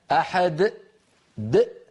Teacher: فبعد أن ينطق الدال يقفل الوترين الصوتيين في فمه. الوتران الصوتيان في الحنجرة إذا قفلا هكذا خرجت همزة ساكنة، وكأنه زيد في التلاوة حرف. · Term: ختم صوتها بهمزة